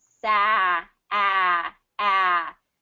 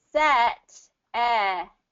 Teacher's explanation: sat, you drop your jaw a little bit more. It has more of that hollow sound.